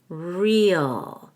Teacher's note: the article uh so it's za the Manza the Manza real we're going to make the long e and connect it to all with a y real when I do that I can stress the word real